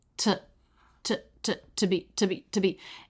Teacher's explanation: So the word to, pronounced with the true T, and the schwa. To be. And those are both flat.